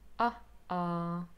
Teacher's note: we first have a schwa, and then we have an oh, and we don't really go from one sound to the other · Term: glottal stop